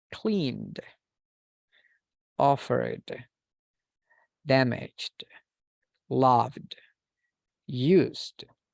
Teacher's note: these sounds are considered voiced because there is a vibration okay we use the vocal chords